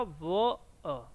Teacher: तो वह जो होता है आपका, उसके उच्चारण में आपका होता है दंत ओष्ठ। तो दंत भी हम यूज करते हैं और ओष्ठ भी यूज करते हैं।